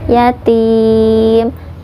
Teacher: ini mad arid li sukun, dibacanya boleh 2, boleh 4, boleh 6 harokat asal konsisten